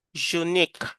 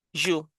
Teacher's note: the voice starts but it sounds Y, not U. Unique just like university.